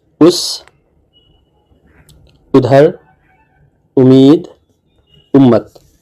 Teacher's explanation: تو ہندی جاننے والے طلبہ کے لیے ا، ای، او کی آوازیں جو ہیں بالترتیب یعنی کرمشہ ا، ای، او سے ملتی جلتی محسوس ہوتی ہیں، اور حمزہ پر پیش کے ساتھ آواز او نکلتی ہے